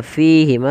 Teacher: Mad tabi'i panjangnya 2 harokat. Pada lafal fi dan ma harus sama, tidak boleh dibedakan. Ya, kesalahan yang sering terjadi dalam baca mad tabi'i itu yaitu beda-beda mad tabi'inya, ada yang 2, ada yang lebih, harusnya sama.